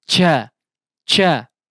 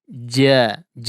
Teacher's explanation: udara yang terlalu deras ya seperti mendorong ya seperti terdorong begitu harusnya huruf Jim tidak ada hembusan udara yang kuat ya terasa begitu Jia Jia biasa saja ya mengalir biasa saja tidak seperti ada